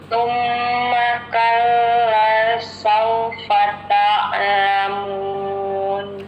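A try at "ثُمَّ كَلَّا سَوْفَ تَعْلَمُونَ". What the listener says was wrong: Coba Ibu ainnya lebih dijelaskan. Ta'lamun. Ibu kalla lanya panjang 2 harokat.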